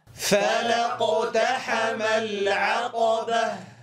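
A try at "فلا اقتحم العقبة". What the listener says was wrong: لا نقول العقبة به فنفخم الهاء، وإنما نجعل الهاء مرققة. العقبة هكذا صوت الهاء. فلاقتحم العقبة.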